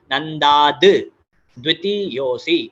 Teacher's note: सो it is सच्चिदानंदा द्वितीयोऽसि, यहाँ पर again दाद, सच्चिदानंदा द्वितीय, ये जो द है और व, द्वितीयोऽसि, द और व ये संयुक्त अक्षर है, तो इसके लिए it will be नंदा द्वितीयोऽसि, नंदा द्वितीयोऽसि नहीं, नंदाद द्वितीयोऽसि, एक अलग द का साउंड इन दोनों को जोड़ेगा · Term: ध्रुतम संधि